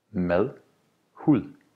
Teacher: Notice that both of these words is not pronounced with a hard D, but with a soft D.